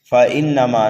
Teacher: نون مشدد ہے، غنہ کر کے پڑھیں گے، میم کو کھینچ کر کے پڑھیں گے